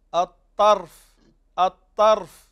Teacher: الخطأ أنك تقول الطرف، شفت الطرف مفتوحة خطأ، هي الراء ساكنة